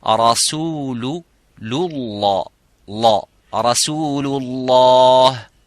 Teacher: So when you join, of course this hamzat al-wasl is a silent, so lam is empty mouth. But the word of lam here in lafzul jalala is full mouth. Rasulullah, la, rasulullah, and not rasulullah or rasulullah.